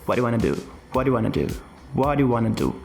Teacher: Percebe que aqui eu tô omitindo muitos dos sons das palavras dessa frase e eu tô linkando essas palavras. Eu tô linkando tudo e criando meio que um único bloco aqui de sons de what do you want to do para what you wan to do.